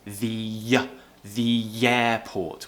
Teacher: Now we're linking again. The airport. We're producing a y sound.